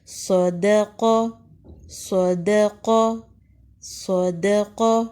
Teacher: بلند پڑھیں گے، دا کو آپ نے باریک پڑھنا ہے، صدق، دا پڑھتے ہوئے آپ کی منہ کی شیپ نیچے کی طرف جائے گی، لیکن صاد اور قاف ادا کرتے ہوئے آپ بلندی کی طرف جائیں گے